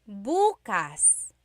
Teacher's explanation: emphasis is on the first syllable that means tomorrow. Very interesting like oh my work I have work tomorrow. · If you say bukas, bukas, emphasis is on the first syllable, that means tomorrow.